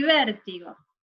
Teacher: vértigo, la sílaba tónica es ver